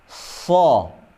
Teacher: Kemudian huruf shad dijelaskan lagi bahwa ini memiliki sifat isti'ala. Sifat isti'ala itu bukan bunyi O, cuma fathah yang ditebalkan saja.